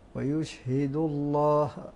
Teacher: نلاحظ الضم قبل اسم الجلاله تغلظ اللام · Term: فتغلظ اللام